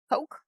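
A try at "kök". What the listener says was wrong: It's choke. Because the Swedish K is pronounced as like a CH.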